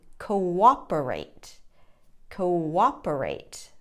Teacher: So if you listen to it on the second syllable, cooperate, there is a W sound there.